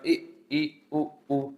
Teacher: समृत स्वर होता है तो ना के बराबर मुंह खुलेगा